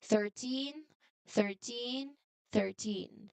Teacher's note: this strong stress on the teen ending, it helps us separate it from the number 30